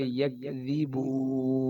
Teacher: 2 دانتوں کے درمیان دال نکالنے کے ساتھ